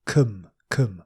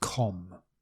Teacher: cum with a schwa, cum, not com, cum, compatible.